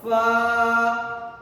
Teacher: فا اوپر والے دانت نیچے والے ہونٹ کے تری والے حصے سے لگیں گے تو فا ادا ہوگا